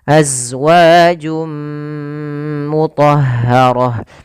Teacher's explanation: Kemudian azwajum mutahah yaitu berlafal jum ada bacaan idgham bighunah yaitu idgham kembali itu masukkan tanwinnya ke huruf mim suara nunnya hilang